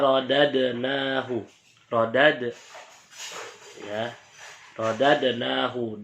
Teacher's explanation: dal fathah bertemu dengan dal berharokat sukun, harus dipantulkan. Nah, hukumnya qalqalah sugra.